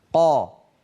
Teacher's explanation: الفصيح عليه أن يكون الصوت شديدا مجهورا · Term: القاف